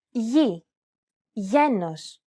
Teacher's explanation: This letter is tricky because the pronunciation changes depending on the surrounding vowels. When it precedes an I or an E vowel, it's pronounced very much like an English Y sound.